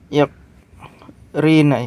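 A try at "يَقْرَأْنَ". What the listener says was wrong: yaqra'na. Ana aqra'u, kan qara'a yaqra'u ya. Ra-nya fathah semua.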